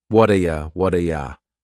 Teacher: That T at the end of the word what is going to change to a D sound. This is really typical of American English, where a T that's surrounded by vowel sounds is going to change to a D. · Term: flapped T